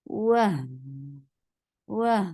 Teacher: Wah, when you are attaching wow with ha, there you are applying rakhaba, and rakhaba is a flow of sound. You are flowing the sound of ha. Wah, wah. And then ha is two counts long.